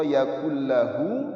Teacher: Dalam bahasa tajwid sederhana kita sebut dengan idgham bila gunnah. Idgham yakni apabila huruf yang pertama masuk ke huruf yang kedua, yakun lahu jadi yakul lahu, ya, tanpa dengung.